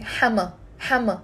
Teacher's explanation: there is a te marbuta which we don't pronounce when the word is on its own. I'm just pronouncing hama.